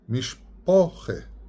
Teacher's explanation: the rounding of the kamats into an O, known as komets in the Masoretic literature, and that's how most grammar is treated, komets, the kamet, to round your A sound. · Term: rounded kamat